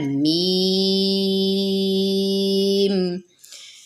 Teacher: اور یہ دونوں ہونٹوں کی خشکی والا حصہ، اس سے میم ادا ہوتا ہے، دونوں ہونٹوں کی خشکی سے اس کا میم ادا ہوتا ہے، میم۔ اور اس کو بھی ناک میں بالکل نہیں پڑھنا۔